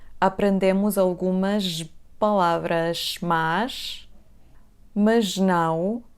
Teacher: A letra S vai ter o som J aqui.